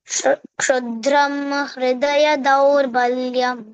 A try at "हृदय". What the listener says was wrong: Hridaya. HR. H and R sound should come. Not R only sound. Not Hridaya. Hridaya.